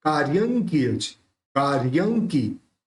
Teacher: निष्पन्न साली वनशालिनी जीव लोके, निष्पन्न साली वनशालिनी जीव लोके कार्यं किलज, देखिए यहाँ पे ऊपर रेफ भी है और बिंदी भी है, दोनों है, तो रेफ तो का के बाद लेंगे और य के ऊपर जो बिंदी है और आगे क है तो उस बिंदी का उच्चारण न निकलेगा।